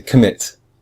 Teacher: commit has two syllables com and mit but we hear we say mit much stronger than com